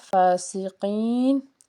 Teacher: قاف کے نیچے زیر، قاف جو ہے اس کو پر پڑھیں گے اور یا ساکن سے پیچھے زیر ہے اس لیے اس کو ہم نے ایک الف کے برابر کھینچنا ہے۔